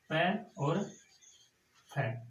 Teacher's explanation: अघोष वर्ण होते हैं, जिनके उच्चारण में गूंज नाद कंपन नहीं होता है